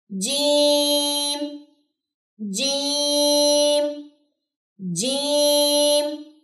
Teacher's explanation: اس کو کبھی بھی چیم نہیں پڑھنا، اس کے اندر سے چے کی ساؤنڈ نہیں آنی چاہیے